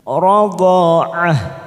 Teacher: Ada tak marbutoh di sini kita baca seperti huruf H, maka ujungnya kita rem.